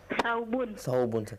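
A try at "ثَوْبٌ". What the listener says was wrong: Thawbun. Afwan, ana sami'tu sabun bis-sad. Thawbun.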